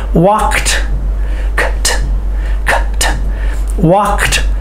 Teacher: but the D sounds like a t so think in your mind w k e t walked walked